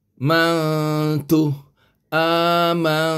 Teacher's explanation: tidak ada tanda mati dia adalah ikhfa kerana nun mati ini Nun nun mati bertemu dengan ta ta huruf ikhfa jadi Man tadi kita kena samar-samarkan bunyinya